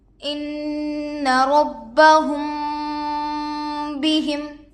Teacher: میم ساکن کے بعد با آئے تو گنہ کے ساتھ اخفا ہوگا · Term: اخفائے شفوی